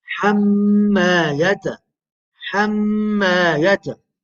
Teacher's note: So what do you do when this Meem Mushaddada appears? You do Ghunnah. You nasalize the sound.